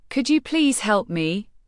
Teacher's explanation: When you ask, Could you please help me? Your voice must go up at the end.